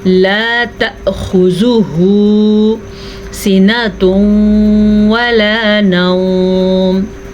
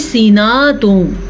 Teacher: बाज़ लोग पढ़ते हैं सीनातुन, नून को लंबा कर देते हैं, जबकि नून के ऊपर ज़बर है, इसको हम लंबा नहीं कर सकते